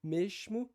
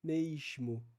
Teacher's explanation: a inserção ali de uma semivogal que nós chamamos de glid que seria então esse I logo depois do E então Vai dizer mesmo Seria algo como mesmo e é isso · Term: ditongação